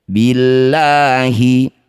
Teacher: Lafaz Allah. Jika didahului kasrah maka lamnya baca tarkik. Baca seperti biasa la saja.